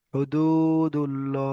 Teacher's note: অক্ষরে পেশ এসেছে, তাই এখানে ল হবে, পুর হবে। আর পুর মুখ গোল করে পড়তে হবে, তো ল উচ্চারণ করতে হবে।